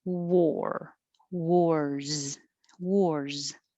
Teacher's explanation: wars this one is spelled with an a but it sounds like an o and you should round your lips a lot